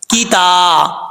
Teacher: عبدیہل کتابا. تا کے بعد سٹینڈ زبر ہے, کھڑا زبر ہے, ایک الف کی مقدار اس کو لمبا کیا جائے گا